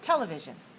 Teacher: if we say television we have four syllables we stress the first